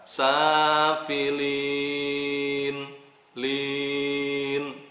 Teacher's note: Safilin, lin, mad aridli sukun, dibacanya 6 harokat.